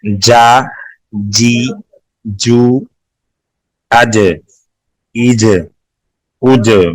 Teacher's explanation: جیم حروف قلقلہ میں سے ہیں, اس کو سختی سے ادا کریں گے